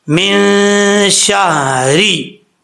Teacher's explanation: نون ساکن کے بعد شین آ رہا ہے حروف اخفا میں سے، تو یہاں پہ ایک الف کی مقدار غنہ کیا جائے گا ، اخفا کا، نون ساکن کا اخفا ہوگا۔ شین کے بعد